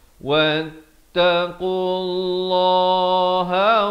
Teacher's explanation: Lafz jalalah di sini dibaca tebal 2 harakat